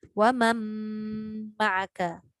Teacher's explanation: Kita dah tak bunyi dah huruf nun. Sebab kita nak jumpa dengan mim. Jadi kita bunyi wa man ma'aka. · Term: idgham